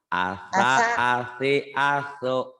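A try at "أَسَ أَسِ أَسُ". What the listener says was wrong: Enggak panjang, belum panjang.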